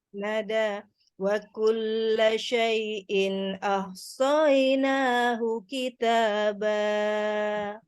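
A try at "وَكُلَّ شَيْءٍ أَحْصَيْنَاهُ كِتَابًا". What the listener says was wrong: Kalimat ahsoinya soy jangan langsung satu ketukan ya. Tadi terkesan diberikan sejenak mat ya. Wa kulla syai'in ahsainahu soinahu. Jadi jangan soy ya, soy terseret.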